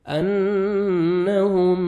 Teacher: سکون، آگے مشدد ہے تو سکون لیٹر چھوڑ دیں گے ہم، میم مشدد کے ساتھ ملائیں گے اور اخفا کریں گے غنہ کے ساتھ، نوز میں ساؤنڈ لے کے جائیں گے